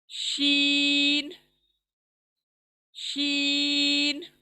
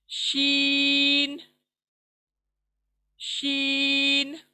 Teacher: जबान के बीच का हिस्सा ऊपर के तालू को लगने से अदा होता है। बिल मुकाबिल ऊपर तालू को लगने से अदा होता है।